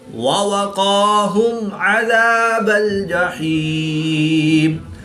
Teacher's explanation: میم ساکن کے بعد عین ہے یعنی کہ حرف با اور میم کے علاوہ حرف عین ہے تو یہاں پر اظہار شفوی ہوگا، غنہ نہیں کریں گے بلکہ میم ساکن کو ظاہر کر کے پڑھیں گے